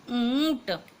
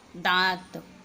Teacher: जो हमारे चंद्र बिंदु अनुनासिक ध्वनि वाले शब्द होते हैं, इनका उच्चारण हमारी नासिका और हमारे मुख से होता है। नासिका मतलब होती है नाक और मुख से इसका उच्चारण होता है।